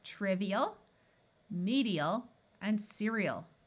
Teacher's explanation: It's not a clear EAL song, but EAL, because AL as a suffix by itself takes on the muffled schwa sound of ul.